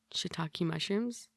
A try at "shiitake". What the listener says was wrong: No, that's SHITAKE. It's not like it's TAK instead of TOK like TikTok.